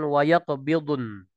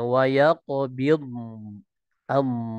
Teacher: tidak ada pantulan pada huruf bod. Huruf bod punya sifat khawat dan juga sifat istitolahnya.